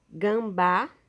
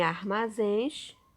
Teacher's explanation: todas elas a sílaba mais forte ou seja a sílaba tônica é a última sílaba